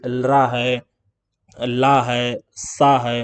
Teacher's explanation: कि लरा है ला है सा है तो आप देखेंगे इनमें दांत के पास जो है टंग का आगे वाला पार्ट हमारा टच हो रहा है